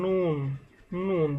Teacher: তারপর 9 নম্বর মাখরাজ জিহ্বার আগা তার বরাবর উপরের তালুর সঙ্গে লাগাইয়া নুন নুন। জিহ্বার আগা বরাবর উপরের যে মুখের অংশ সেখানে জিহ্বার আগাকে স্পর্শ করিয়া নুনটা উচ্চারিত হয়।